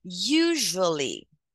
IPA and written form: ˈjuː.ʒu.ə.li (usually)